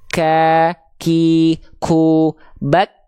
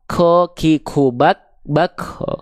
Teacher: Huruf kaf itu punya sifat hams. Hams itu artinya dia mengalirkan sedikit percikan nafas untuk huruf kaf. Kalau huruf kaf memang iya dia keluar percikan nafas karena punya sifat nafas, punya sifat hams.